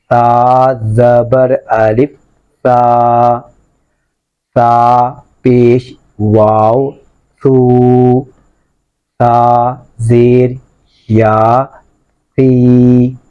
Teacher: اس کو آپ نے زبان کی نوک اوپر دانتوں کے کنارے پہ لگانی ہے، جو اوپر والے دو دانت ہیں اور زبان کی نوک، اسے سیٹی نہیں آئے گی.